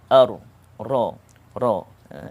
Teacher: Dia ada bunyi getaran. Semasa menyebut huruf ini, lidah kita bergetar. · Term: at-takrir